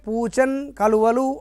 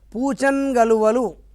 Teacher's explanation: పూచన్ నకార పొలుతో కూడిన అక్షరం వచ్చింది. దానికి కలువల్లోని కచట తపలు అంటే మన పరుషాల్లోని కా వచ్చింది. కలిపినప్పుడు చూడండి ఆ కా కాస్త గాగా మారింది. పరుషములు పరమైనప్పుడు సరళములు వస్తాయి అనుకున్నా కదా, గా అయింది.